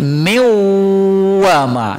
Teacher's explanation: Kalau nun mati bertemu huruf waw, nunnya hilang. Ya, langsung ke huruf waw, seolah-olah waw itu bertasdid. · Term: idgham